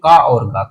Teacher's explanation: का को बोलो तो कम हवा निकलती है बोलने पे। ऐसे ही गा के बोलो सॉरी गा वर्ड को बोलो तो कम हवा निकलती है। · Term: अल्पप्राण